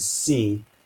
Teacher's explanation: it's got a lot of constriction in the mouth but there is still some amount of continuous airflow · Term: fricative